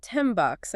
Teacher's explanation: That's because the N sound, which you make with your tongue, changes to an M sound, which you make with your lips, to get ready for the B sound in bucks, which is also made with your lips. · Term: assimilation